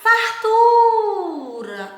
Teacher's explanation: Olha o tu saindo com mais intensidade, saindo mais forte, com mais força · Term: sílaba tônica